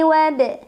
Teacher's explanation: Karena ada huruf qalqalah yaitu ba yang sukunnya sukun asli dan berada di tengah-tengah bacaan. Cara membacanya dipantulkan dengan pantulan yang kecil. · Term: qalqalah sughra